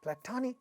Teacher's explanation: So, platonic, we know that this syllable is stressed, but it so happens that this has a ta sound in the initial position of this stressed syllable, therefore, it is getting aspirated.